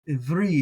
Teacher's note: that ayin beginning a word, and I like to do that, as I've said before, like a guttural stop. So the kind of sound, and it's got the hirik beneath it.